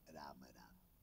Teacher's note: राम म्हणताना तोंड उघडावा लागतंय आणि म म्हणताना बंद करावा लागतंय. होटाला होट चिटकवल्याशिवाय म म्हणता येत नाही आणि तोंड उघडल्याशिवाय राम म्हणता येत नाही.